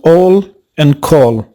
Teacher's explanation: from its position in the figure we can confidently say that this is a back vowel between half closed and half open tongue height the lips have a rounded shape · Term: or sound